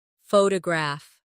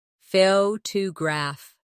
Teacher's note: Now photograph. The stress is on the first syllable. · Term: word stress